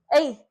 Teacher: कंठ तालव्य वर्ण त्या ठिकाणी कंठातनं येतं आणि तालव्यामधनं सुद्धा याचा उच्चार केलेला असतो